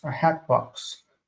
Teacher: there's no vowel between the T and the B